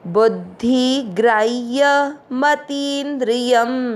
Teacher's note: मात्रा ती की खींचेंगे क्योंकि बड़ी मात्रा है